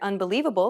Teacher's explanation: do you notice how the lee is accentuated? That's because it's stressed. Stressed syllables are pronounced longer and louder than unstressed syllables.